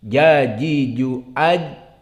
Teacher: Maka jim Di sini menjadi syiddah dan menjadi jahr. Jajiju aj, tidak keluar nafas dan tidak keluar suara.